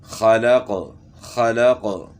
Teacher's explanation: وقف کی وجہ سے قلقلہ بھی قاف میں ہم نے کیا